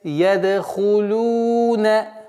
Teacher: «Лям» и «дамму». «Дамму» протягиваем в размере 2 огласовок, так как здесь, естественно, удлинение.